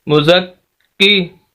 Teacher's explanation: کاف کے اوپر شد سخت کرنا ہے، آواز کو روکنا ہے